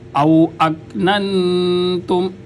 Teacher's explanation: بریک کاف حروف قلقلہ میں شامل نہیں ہے، لہٰذا آواز کا ٹھہراؤ ہو، قلقلہ نہ ہو